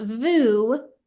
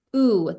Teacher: We're not saying the v sound of the vav, we're just saying oo. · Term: Shuruk vowel